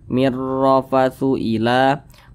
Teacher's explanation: alif lam berjumpa dengan huruf ro hukumnya adalah alif lam syamsiah maka huruf lamnya ini dia tidak dibaca langsung masuk ke huruf ro · huruf lamnya ini dia tidak dibaca, langsung masuk ke huruf ra. Mir, langsung ke huruf ra. · huruf ra dibaca tebal, dibaca tabkhim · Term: alif lam syamsiyah